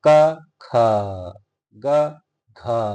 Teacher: ख और घ बोलने में ज्यादा श्वास लगता है। ख में और घ में ज्यादा श्वास बाहर निकलता है। क ग तो कम श्वास निकलता है। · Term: महाप्राण